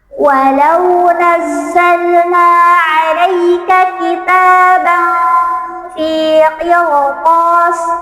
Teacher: itu dibaca tebal ra matinya